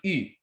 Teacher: this is a closed front rounded vowel it's basically e's counterpart but it's but it's rounded and all